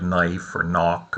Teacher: English dropped that k sound over time